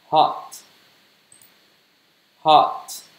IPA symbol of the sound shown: hɒt